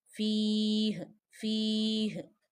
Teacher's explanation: It means do waqf here, stop here, make ha sakin because of waqf sign